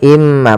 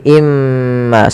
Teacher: adanya tanwin bertemu dengan huruf mim maka cara bacanya masukkan ke huruf Mim yaitu imma bukan lagi inma tapi imma sambil ditahan gunahnya dua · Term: Idgham